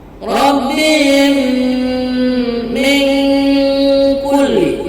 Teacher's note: nun sukun bertemu dengan huruf kaf, itu dibaca dengan samar-samar dan didengungkan dan berbunyi ang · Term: ikhfa hakiki